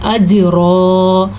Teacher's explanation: اجرا، جیم کے اوپر قلقلہ ہوگا اور را دو زبر رن کی صورت میں را پر پڑھی جائے گی اور وقف کی وجہ سے را دو زبر رن ایک الف بن جائے گا زبر کے ساتھ